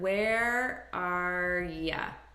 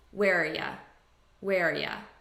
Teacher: I'm taking just the r sound and I'm reducing this to ya which is a very common reduction and I'm just combining these as one word where are ya